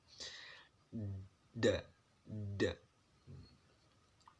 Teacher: Lidahnya taruh di depan. Da. Kena gigi atas. Baru dikeluarkan.